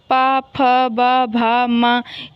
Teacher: ऐसे ही पा वर्ग, ये ओष्ठ, पा, फ, ब, भा, मा, जब तक दोनों ऊपर वाला और नीचे वाला ओठ आपस में मिलेंगे नहीं, आप ये वर्ण नहीं बोल सकते हैं